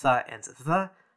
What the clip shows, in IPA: θ and ð